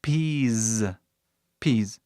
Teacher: Mas veio o som de Z. Tá escrito um S, mas ele faz som de Z aqui.